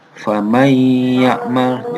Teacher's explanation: Jadi membacanya langsung membaca huruf ya-nya. Jadi menghilangkan bacaan huruf nunnya. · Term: idgham biguna